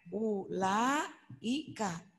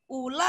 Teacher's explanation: Setelah la ini kan ada alif. La ini berarti jadi panjang. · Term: mad wajib muttasil